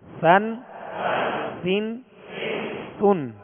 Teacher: بالکل نرم ہوا سے یہ ادا ہوتا ہے، اس میں سختی نہ ہو، سیٹی کی آواز پیدا نہ ہو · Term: سا